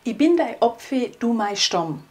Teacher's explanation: etwas, das ganz typisch für unseren Dialekt ist, und zwar, dass der Vokal A zu O wird, also Apfel zu Opfe und Stamm zu Stomm.